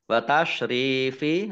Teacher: ro kasroh ya sukun, mat tobi'i, panjang 2 harokat